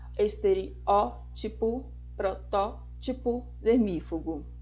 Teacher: E na verdade a pronúncia correta é com acentuação na antepenúltima sílaba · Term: proparoxítonas